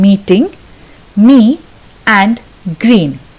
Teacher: The tongue is high and forward in the front of the mouth, but nothing actually touches. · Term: E vowel sound